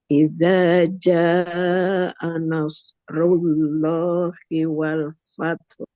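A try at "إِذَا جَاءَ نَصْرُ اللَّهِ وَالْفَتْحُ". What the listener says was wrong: Oke, ini tinggal haknya. Jaknya coba panjangin sedikit lagi jaknya. Kurang panjang satu ketuk. Dan haknya. Fat.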